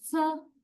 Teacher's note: your tip of the tongue goes closer to the alveolar ridge when you say sa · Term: alveolar consonants